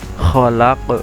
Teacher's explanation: Jika diwakafkan atau berhenti, maka dia dibaca qalqalah kubro, khalaq. Nah, itu dibaca qalqalah kubro.